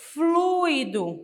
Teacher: é uma vogal e uma semivogal uma vogal e uma semivogal a vogal é pronunciada com mais força do que a semivogal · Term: ditongo